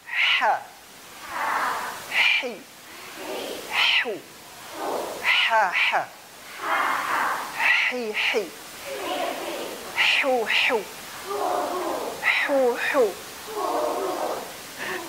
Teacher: Huruf ha ini ya harus bersih. Ya. Jangan sampai berubah menjadi ha atau jadi kha atau malah jadi kaf.